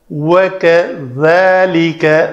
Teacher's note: ذال کے لیے جو ہے نا نوکے لسان دونوں دانتوں کے درمیان آنی چاہیے